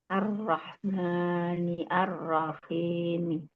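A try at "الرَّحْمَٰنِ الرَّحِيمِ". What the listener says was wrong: Disambung, Bu. Ar-Rahmanir-Rahim.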